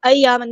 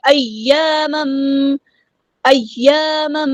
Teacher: گے، آواز کو اٹھانا ہے تھوڑا سا، ایامن نہیں ایامم، ایامم، تنوین کے بعد میم آیا ہے تو یہاں پہ ادغام مع الغنہ ہو رہا ہے، تنوین کی آواز کو میم میں مرج کر دیں گے